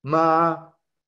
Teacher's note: tono la m con la y el primer tono ma entonces es como un sonido alto sostenido